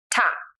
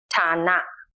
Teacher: It is an aspirated T sound, like an English T in true or tense.